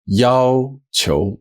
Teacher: So you'll notice that 要, it's the same character as the character 要 for want, but this time it has a first tone